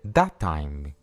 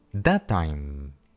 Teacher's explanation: ¿Notas cómo en vez de separar las palabras, simplemente alargamos la consonante un poco?